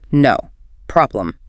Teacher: a flat low pitch and a sharp hard stop between the words